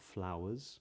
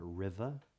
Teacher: The R's that would not be said is the R in flowers, because it's followed by the consonant S